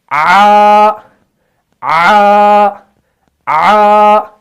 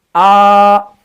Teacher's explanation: عین کی جو آواز ہے یہ حلق کے بیچ والے حصے سے نکلتی ہے، اور حمزہ کی آواز حلق کے نچلے والے حصے سے نکلتی ہے